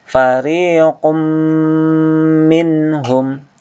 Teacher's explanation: nun sukun ketemu ha. Ini dibaca jelas izhar tanpa dengung.